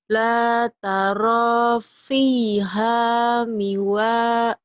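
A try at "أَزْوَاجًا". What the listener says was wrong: ini wajah, bukan mi wajah. Ini wajah. Ini wajah. iwajan. Oh iya, kalau dibaca apa adanya iwajan. La taro fiha iwajan. Dihentikan iwajan. Dihentikan jadi La taro fiha iwajan.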